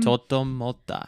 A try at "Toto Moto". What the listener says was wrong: Moto. It's all O's. You said ta. Totomoto.